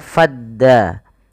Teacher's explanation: huruf Fa langsung dibaca kepada huruf Dal maka fadda alifnya tidak dibaca